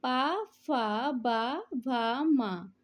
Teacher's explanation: दोनों ओष्ठ के स्पर्श से जो वर्ण बोले जाते हैं वो ओष्ठ कहलाते हैं